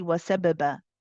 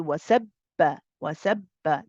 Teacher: The qalqala is not there. The bounce is not there.